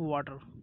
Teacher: when the T is between two vowels, okay, it become D.